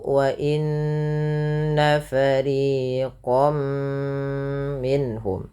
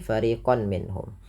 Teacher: Kalau dia masuk ke waw berarti ganti dengan huruf waw, karena di sini masuknya kepada huruf mim, maka langsung dibaca masuk ke huruf mim, yaitu wa inna fariqam minhum, tidak lagi fariqan minhum, karena dia dihukumi dengan idgham, artinya memasukkan bi gunnah disertai dengan penahanan · Kalau huruf setelahnya mim, maka masukkan tanwinnya bunyi nunnya mengganti dengan bunyi mim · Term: idgham bi gunnah